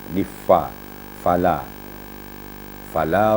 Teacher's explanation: Fa itu ada mahmusnya ada anginnya Jadi tidak boleh lidah kita tidak boleh bibir kita dirapat kan